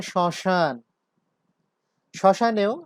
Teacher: শ্মশানেও আমরা প্রথম তালব্য শ এর সাথে যে ম যুক্ত হয়েছে সেই ম এর উচ্চারণ পাচ্ছি না, কিন্তু অনুনাসিকতার সৃষ্টি হয়েছে।